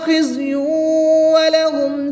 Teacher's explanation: تنوین کے بعد واو حرف ملون میں سے ہے تو یہاں پر ادغام مال غنہ ہوگا، غنہ کر کے پڑھیں گے